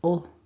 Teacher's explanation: It's like you're swallowing the L, so the L when it's dark is UL. · this is the dark L, which is the one that happens kind of further back in the mouth. So you probably won't need your tongue, your mouth as open as you can see on that left image.